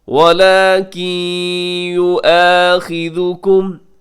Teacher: وَلَكِن نون ساکن کے بعد یا یرملون کا ادغام